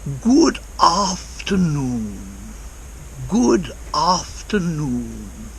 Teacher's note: he pronounces every part of it and it's almost like there's a space between after noon